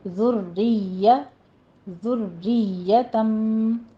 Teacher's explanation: ذال کو نرمی سے پڑھیے، اس میں سیٹی کی آواز نہیں آنی چاہیے، را یہاں پہ مرقق ہے، باریک پڑھی جائے گی، تشدید والی کسرہ والی ہے، آگے یا پہ آپ نے سختی کرنی ہے پر اس کو شین اور جیم سے ہٹ کے پڑھنا ہے، ذُرِّيَّہ ذریتم، را کو نرمی سے نہیں پڑھنا، تشدید آپ نے پوری ادا کرنی ہے لیکن اس کو باریک رکھنا ہے۔